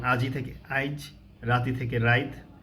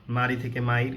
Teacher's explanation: এটা হচ্ছে ই ধ্বনির অপিনিহিতি, ইকার বউকার আগে চলে এসেছে